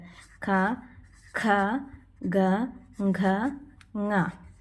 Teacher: ഖണ്ഡ്യം എന്ന് പറഞ്ഞാൽ എന്തുകൊണ്ടാണ് ഇങ്ങനെ പേര് വരുന്നത് എന്ന് വെച്ച് കഴിഞ്ഞാൽ, നമ്മൾ ഭാഷ ഈ അക്ഷരങ്ങൾ പറയുമ്പോൾ നമ്മൾ ഏത് ഭാഗം കൊണ്ടാണ് ഇവ ഉച്ചരിക്കുന്നത് അതിനനുസരിച്ചിട്ടാണ് ഇവയ്ക്ക് പേര് കൊടുത്തിട്ടുള്ളത്. അപ്പോൾ കണ്ഠഭാഗം കൊണ്ട് പറയുന്നത് കൊണ്ട് ഇവയെ ഖണ്ഡ്യം എന്ന് പറയുന്നു.